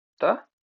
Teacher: जिनका उच्चारण ऊपर दांतों पर जीभ लगाने से होता है उसे क्या कहते हैं? उसे कहते हैं दंत।